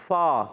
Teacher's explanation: فا کا مخرج اوپر والے دانتوں کے کنارے نیچے والے ہونٹ کے جب تر حصے سے لگتے ہیں